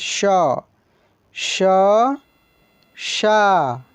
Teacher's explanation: तालव्य श को तालु से बोला जाता है